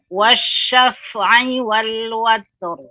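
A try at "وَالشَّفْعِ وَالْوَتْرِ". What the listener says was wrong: Ya, antara fa dan ain dijelaskan wasyaf'i, syaf'i. Ya, jangan dijedah, digabungkan antara ta dan ro.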